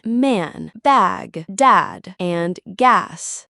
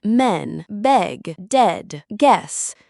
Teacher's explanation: So, when you say men and man, notice how man sounds stretched and fuller, while men uses a shorter, lighter vowel.